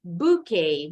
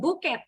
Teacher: Buket bahasa Indonesia. Kalau bahasa Inggris, T-nya nggak bunyi. Bouquet. Ikutin pronunciation bahasa aslinya.